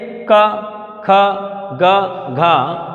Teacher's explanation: क, ख, ग, घ, तो गले से उच्चारित होते हैं